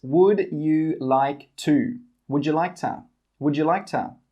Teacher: And we don't say 'to'. We say 'tuh'.